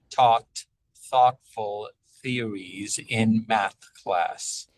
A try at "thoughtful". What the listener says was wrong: On thoughtful, can we make sure we have a crisp T? Thoughtful. Thoughtful theories.